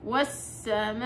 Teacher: لما وصلتها بالهمزه صارت عندي مد فرعي اللي هو المد الواجب، ماشي. وفي قراءة حفص 4 إلى 5 حركات، فبنقول والسماء صارت من 4 إلى 5 حركات، انت حرة.